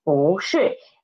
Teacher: because it is before the fourth tone syllable, 是, that's why 不 changed its pronunciation, changed its tone into second tone. So it becomes 不是.